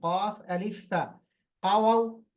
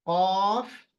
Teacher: नहीं वा वा क फ है क अलिफ फ नहीं कफ फ की आवाज अच्छी तरी से आना चाहिए हवा के साथ